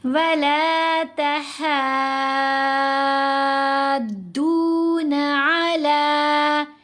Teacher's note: ہا کو اس میں ہم نے 6 حرکات کی مقدار یعنی 3 الف کی مقدار لمبا کیا. ہا کو دعاد سے ملایا جائے گا مضبوطی سے، کیونکہ دعاد کے اوپر تشدید ہے، دعاد کو لمبا بھی کیا جائے گا.